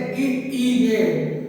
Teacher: अग्र स्वर जैसा कि नाम से ही प्रतीत हो रहा है। अग्र स्वर जीभ का अग्र भाग आगे का हिस्सा जीभ का।